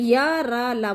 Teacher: तो या, रा, ला, वा जितने भी अंतस्थ व्यंजन हैं वो हमारे क्या हैं, सघोष हैं और अल्प प्राण हैं